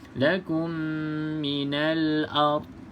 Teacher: pastikan huruf dad ni tidak ada lantunan. Sebab dad ni famous juga orang lantunkan.